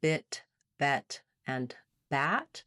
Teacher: Our e like in bet is right in the middle. The front vowels basically have more and more opening with the front of the tongue going down. So between bit and bat, the tip of my tongue is getting more open.